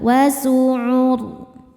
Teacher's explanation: Ketika berhenti di huruf ro, ro-nya disukunkan dan dibaca secara tafkhim. Kenapa? Karena sebelum ro disukunkan ada baris dhammah, maka ro-nya tebal.